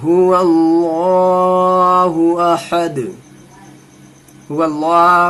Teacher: अल्लाह का लाम पूरा होगा, जबर आ रहा है अल्लाह के लाम से पहले